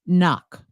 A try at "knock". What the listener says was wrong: So it's not O, it's ah. Even though there's an O, it's not knock, it's knock. And it's short. It's not knock, it's knock. Knock. So a silent K, knock.